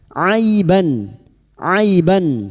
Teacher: ain yang berharokat fathah bertemu ya sukun kita lunakkan huruf lin